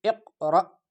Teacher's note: اور یہاں حمزہ ساکنہ جب آ جائے تو حمزہ ساکنہ پڑھتے وقت ایک جھٹکا سا لگتا ہے